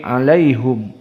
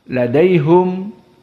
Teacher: tidak dibaca alaihim karena mereka tidak mengenal ha bertemu dengan mim dalam keadaan kasroh